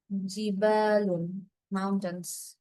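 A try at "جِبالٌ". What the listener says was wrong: মাশাআল্লাহ, ঠিক আছে।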